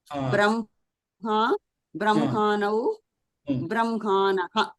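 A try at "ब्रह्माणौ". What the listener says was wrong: అణ ఇక్కడ బ్రాలో రేఫ్ ఉంది కదా, అంచేత నా పలకాలి.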